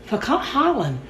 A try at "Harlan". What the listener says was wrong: It sounds like you're saying Carlin.